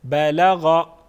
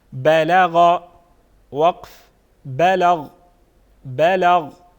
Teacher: یعنی غائن پہ جو حرکت ہے اس کو ہم نہیں پڑھیں گے وقف کی حالت میں